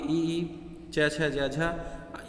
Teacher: ऐसे वर्ण जिनको उच्चारण में जिह्वा तालु को स्पर्श करती है और उसे तालब्य वर्ण कहते हैं, ये आपके ई च छ ज झ यहाँ आ जाते हैं।